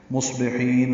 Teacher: ہا وسط حلق سے ادا کریں گے